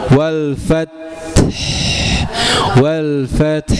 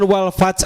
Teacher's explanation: Huruf ta itu memang tidak punya hams. tidak tidak punya qalqalah tapi dia punya hams. Artinya dia mendesiskan napas ya.